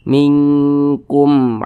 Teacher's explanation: maka karena dia izhar dibaca jelas tidak berdengung baca pendek saja minkum jangan jangan dibaca minkum jangan jangan seperti itu pendek saja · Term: izhar syafawi